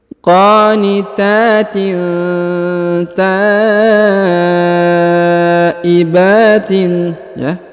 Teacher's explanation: huruf ta dipanjangkan 5 harokat karena di atasnya terdapat tanda bacaan panjang 5 harokat